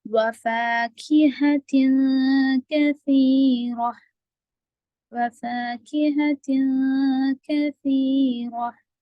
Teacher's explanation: رو کو موٹا پڑیں گے کیونکہ رو پر زبر ہے